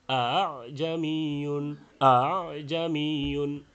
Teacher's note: দ্বিতীয় হামজাকে তাসহিল করা, অর্থাৎ বাইনাল হামজাতি ওয়াল আলিফ, হামজা এবং আলিফের মাঝামাঝি পড়া